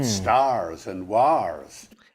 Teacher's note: Did you notice that he's pronouncing the R because it was rotic? The dropping of the R in between vowels wasn't a thing in the middle ages.